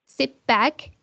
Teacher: the t sound changes to a p sound, as we can see there, before b, and p.